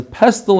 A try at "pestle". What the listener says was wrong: The T is silent.